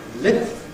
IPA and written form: lɪp (lip)